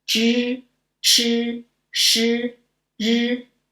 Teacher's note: these four, the tongue is raised and curled